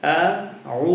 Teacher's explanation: একভাবে আমি আইন উচ্চারণ করলাম হলকের মাঝখান থেকে, আবার ওয়াও কিন্তু এই যে দুই ঠোঁটের মাঝখান থেকে